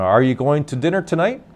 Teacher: if I'm going to ask a question my voice will go up at the end to reinforce that it's a question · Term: voice going up